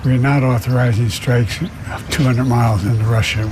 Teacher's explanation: that tired sound it's really breathy it's really tired it's really low